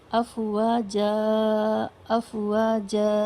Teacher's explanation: افواجہ میں جیم کے اوپر 2 زبر ہے، اور جب بھی آپ 2 زبر پر وقف کریں گے، یعنی اگر اینڈ آف دا آیا، جو کوئی بھی ورڈ اگر ایسا ہے جو آیت کے قریب ہے، آپ کو اس پر رکنا ہے اور اس پر 2 زبر ہیں، صرف 2 زبر کے بارے میں بات ہو رہی ہے، تو ہم اس کو 1 زبر الف کے ساتھ پڑھتے ہیں، اور ود ایلنگویشن، یعنی تھوڑا کھینچ کر ہم پڑھیں گے. افواجن لکھا ہے، افواجا افواجا اس طرح پڑھیں گے.